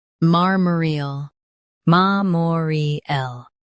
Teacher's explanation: Ma, more, L, MARMOREAL. Emphasize mar and keep more soft.